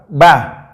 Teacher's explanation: Ba itu makhrajnya, tempat keluarnya itu bertemunya dua bibir dalam keadaan tertutup rapat